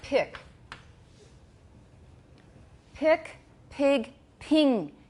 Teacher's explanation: can you hear that vowel getting higher and higher